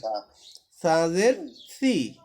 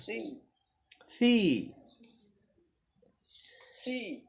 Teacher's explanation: জিহ্বার আগা উপরের দাঁতের আগার সাথে লাগায়